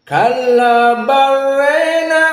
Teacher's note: dibaca dalam keadaan Al imalah alkubro maka dibaca re tidak dibaca ro